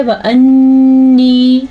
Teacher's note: آگے کیا ہے؟ وَأَنِّي، نون کا غنہ ادا کرنا ہے اور یا مدہ بھی ادا کرنا ہے، یا کو کھینچ کے پڑھنا ہے، نون پہ رک جانا ہے تو غنہ ادا ہو جائے گا، لیکن واو کو لمبا نہیں کرنا، واو زبر وا، وَأَنِّي، اور حمزہ تو ویسے ہی نون کے ساتھ جوڑا ہے۔